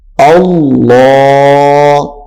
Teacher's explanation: اب یہاں پہ الف بھی موٹا ہو گیا ہے یعنی پر ہو گیا ہے اور لام بھی پر ہو گیا ہے